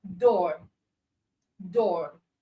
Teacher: the mouth positioning is a bit tenser. So that makes it long. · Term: long or sound